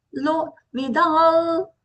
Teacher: You will feel the vibration in the nasal passage because the anuswara is followed by the la in the next word, lokan. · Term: nasal la